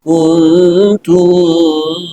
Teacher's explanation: Sedangkan ikhfa aqrab, nun mati ketemu ta, suaranya suara n